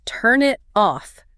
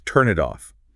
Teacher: That final N sound of turn links smoothly to the I of it and the T of it links to the O of off. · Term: linking sounds